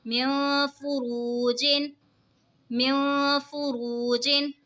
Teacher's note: نون ساکن کے بعد حروف اخفا کا فا ہے تو اخفا ہوگا یعنی غنہ